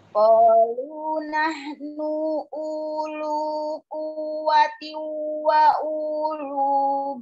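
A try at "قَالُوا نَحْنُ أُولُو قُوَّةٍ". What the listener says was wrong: Qalu nahnu ulu. U yang pertama tuh pendek Umi. Qalu nahnu ulu.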